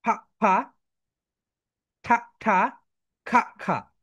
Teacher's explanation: এই ওয়ার্ডগুলো যখন তোমরা উচ্চারণ করছো, তোমাদের মুখ থেকে অতিরিক্ত বাতাস বের হচ্ছে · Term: অ্যাসপেরিটেড ওয়ার্ড